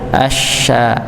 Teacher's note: antara tengah lidah ini bertemu dengan langit-langit tidak ditempelkan nggih, tapi ditemukan saja. Jadi kalau ditempelkan nanti malah enggak nyebar udarnya ya. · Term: syin